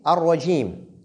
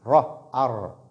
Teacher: quand cette lettre ra porte fatha, ra est emphatique, comme dans ce cas.